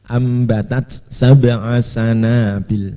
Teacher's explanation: Ambatat ini taknya harus ada hamesnya ya, karena tidak idgham ya. Tidak idgham, harus hamesnya tetap kelihatan.